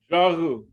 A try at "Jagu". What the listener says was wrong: Close. You got a glottal there? Good try though. Good try.